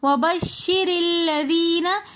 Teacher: وبشر کے اندر را کے نیچے زیر ہو تو اس لیے ہم وبشری کے را کو باریک پڑھیں گے۔ آگے لام مشدد آ رہا ہے تو اس لیے ہم را کے ساتھ جو الف لکھا ہوا ہے ہم اس کو نہیں پڑھیں گے بلکہ را کو لام کے ساتھ ملا کر پڑھیں گے وبشر الذین۔ · لذین میں یا مدہ ہے تو اس لیے ہم لذین تھوڑا سا کھینچ کر پڑھیں گے۔